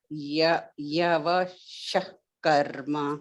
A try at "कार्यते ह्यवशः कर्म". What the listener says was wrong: ह्यवशः कर्म is ha is there ह्यवशः कर्म ह्या it is ह्या